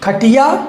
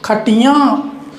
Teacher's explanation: यानी नाक से आवाज़ आएगी इनके उच्चारण में और लिखने में भिन्नता, यहाँ पर चंद्र बिंदु लग जाएगा।